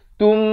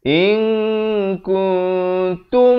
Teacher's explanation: wajib idgham mislan saghir, mim mati bertemu mim, dengungkan.